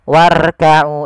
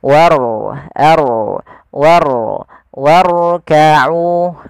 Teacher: huruf rnya dibaca dengan ro tafkim yaitu ro yang tebal Nah bukan dibaca seperti ini Warau itu rnya tipis Tapi diangkat